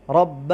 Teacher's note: را کو پر پڑھیں گے اس لیے کہ را کے اوپر زبر ہے